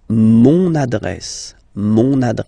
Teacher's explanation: you can hear now this little link so you've got to pronounce this n